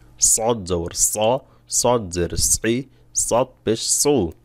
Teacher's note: সদ বলার সময় জিহ্বার গোলা হালকা উপরের দিকে উঠে যাবে এবং আইনের আভাস পাবে স চাপ দিবেন গলার ভিতর চাপ দিবেন